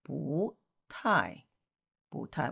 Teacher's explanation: Two falling tones together make the first one going up.